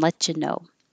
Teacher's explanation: The T and the Y make a ch, and you can say oo for you or ya for ya.